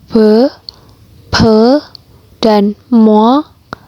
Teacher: Untuk yang p, p, dan mo itu cara pelafalannya kedua bibir. Jadi harus menempel kedua bibirnya.